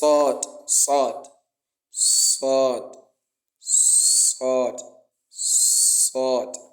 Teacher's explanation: It is pronounced on the tip of the tongue when the tip of the tongue relies on the bottom incisors.